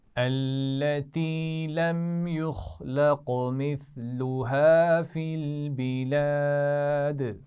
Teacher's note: لم یخلق، میم پر غنہ نہیں ہوگا کیونکہ میم ساکن کے بعد میم اور با دونوں نہیں ہیں. یخلق، خا اور قاف دونوں موٹے پڑے جاتے ہیں اور قاف پر قلقلہ بھی ہو رہا ہے.